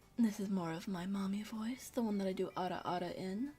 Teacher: It's a little more breathy than normal. I'm not I don't know why, but it has this weird inflection to it.